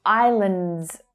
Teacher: It's the I as in my or sky vowel sound, and it's followed by the unstressed vowel sound, the schwa. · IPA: /aɪ/